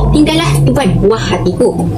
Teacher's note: Tuan merupakan gandingan vokal huruf U dan A yang berada di bersebelahan, namun berada di dalam dua suku kata yang berbeza, iaitu tu dan an.